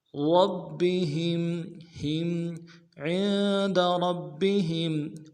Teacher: ہا کو میم ساکن کے ساتھ ملانا ہے، میم ساکن میں غنہ کریں گے